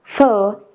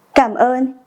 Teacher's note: this is a high tone and the pronunciation goes up a little and then goes down and goes up a little at the end